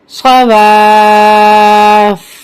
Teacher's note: وقف کی صورت میں فا پہ جماؤ باقی رہے گا، یعنی کہ سختی باقی رہے گی اور زبر امڈ ہو جائے گا